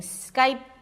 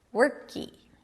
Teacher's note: people just add another vowel to create that nice familiar feel of open vowel at the end of a word. So instead of saying Skype, you may hear people saying Skype. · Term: tiny E sound